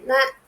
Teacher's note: ந வந்து பல்லின் அடி மேல்வாய் பல்லோட அடிப்பகுதியை தொடுது